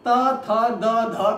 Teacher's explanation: त थ द ध को जब आप बोलते हैं तो जीभ जो हमारी होती है वो जीभ जो हमारी होती है वो दंत को स्पर्श करती है, इसलिए दंते कहा जाता है